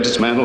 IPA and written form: dɪˈsmæn.t̬əl (Dismantle)